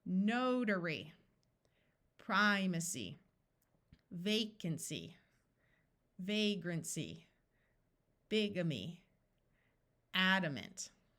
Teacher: these y's are not in accented syllables so they are going to have the long e sound